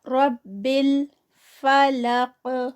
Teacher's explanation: زیر کے ساتھ، برب، را ہیوی زبر کے ساتھ، رب الفلق، اور قاف جو ہے وہ ہیوی، اور اینڈ پہ جب یہ سٹاپ پہ آئے گا تو یہاں پر قلقلہ ہوگا ۔ من شر، اور پھر یہاں پر من جو ہے وہ